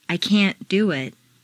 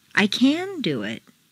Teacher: make the negative can't sound very short and stress both can't and the verb